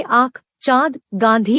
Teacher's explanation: अनुनासिक, इसका उच्चारण नाक और गले दोनों से होता है